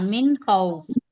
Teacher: नून की आवाज को हम जाहिर करके पढ़ रहे हैं ना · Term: इजहार